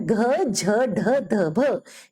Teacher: पंक्ति के वर्ण घ झ ढ ध भ ये महाप्राण है चौथे वर्ण के उच्चारण के अंत में ह जैसी ध्वनि आती है